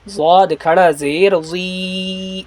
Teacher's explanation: صاد کھڑا زیر سی، ضاد کھڑا زیر زی، صاد اور سین دونوں میں فرق کرے گا، صاد جب کہیں گے تو منہ کو گول کر کے بالکل کہیں گے، اور ضاد یہ زبان کے بائیں سائڈ سے ادا ہوگا